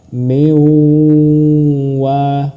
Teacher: dengan dengung ditekan dan ditahan dua harakat